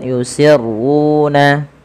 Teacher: pada lafal ru juga kita panjangkan dua harakat karena dia Mad thii w yinun dan Ma panjangkan juga dua harakat harus sama dengan